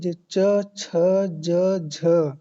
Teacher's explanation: च छ ज झ इसको बोलते हैं स्पर्श संघर्षी व्यंजन